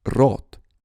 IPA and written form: rɔt (рот)